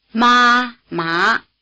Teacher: both are in the upper part of the pitch range but the high tone stays level while the rising tone climbs